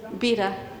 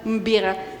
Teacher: Some Greek speakers do not pronounce a clear b, but always a mb.